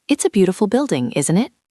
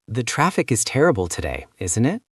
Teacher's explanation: in lobby talk, we are just trying to get them to agree with us to build a connection. So, our voice goes down at the end. Down, like a statement. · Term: falling tone